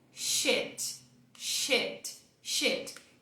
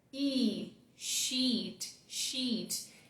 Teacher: Aqui você vai prolongar o I do português, como em ilha